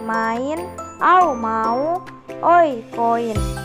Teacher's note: walaupun mengandung dua vokal bukanlah vokal rangkap karena terdiri dari dua suku kata